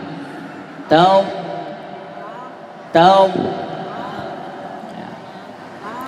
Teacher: Taw, ada angin atau udara yang tertahan, kemudian dipanjangkan.